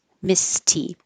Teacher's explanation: so if your voice is off leave it off and the T letter will sound like a t sound